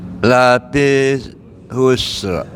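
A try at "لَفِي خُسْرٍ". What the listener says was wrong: Khusr. Tidak ada alif lamnya ya Pak ya. Jadi bukan lafil khusr tapi lafi khusr.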